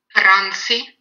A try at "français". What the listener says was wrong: Très bien. Très bonne prononciation.